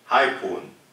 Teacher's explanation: the fundamental frequency stays about the same, nothing much happens, the person is not super loud